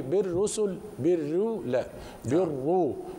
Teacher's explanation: فالراء مشددة مركبة من رأين، الأولى ساكنة والثانية مضمومة فأدغم الساكن في فيما بعده، والمدغم يأخذ حكم المدغم فيه تفخيما وترقيقا.